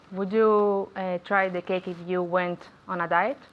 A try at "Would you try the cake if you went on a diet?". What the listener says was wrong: Very good pronunciation.